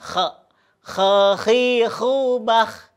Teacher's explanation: ketika kita mengucapkan huruf kha ini itu berada di posisinya ada di ujung, ya. Ujung tenggorokan.